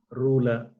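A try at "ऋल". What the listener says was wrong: It is R, not Ru. Generally, yeah. Generally, R, people pronounce wrongly as the Ru. They round the lips. You just watch how your lips is. There is no rounding of lips when you pronounce R. It is Rula. Rula. When you say R, in fact, your tongue, your lips doesn't touch. It is flat. Whereas when you say Ru, that oo sound is there. Oo is naturally you will see the rounding of your lips.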